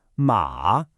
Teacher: The third tone dips down and then comes back up.